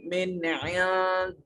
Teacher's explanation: یہاں نون ساکن کے بعد عین حروف اظہار میں سے، تو یہاں نون کو ظاہر کر کے پڑھیں گے